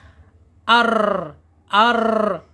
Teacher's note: Selain dicondongkan, asal mulanya ro ini takrir. Takrir itu bergetar